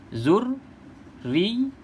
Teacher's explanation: Dekat ra ada sabdu, dekat ya pun ada sabdu. Kena baca bagi jelas dua-dua. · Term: sabdu berturutan